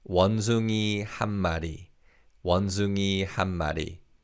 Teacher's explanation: because of connected speech, the 니은 받침 in 한 sounds like a 미음 받침